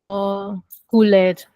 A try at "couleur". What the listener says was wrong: Yes, you both made the same mistake. The last part of it is couleur. Okay, leur. It's like cooler, but just we elongate the last part of it. Cooler, cooler.